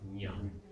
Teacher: So it's up on the palate, nya.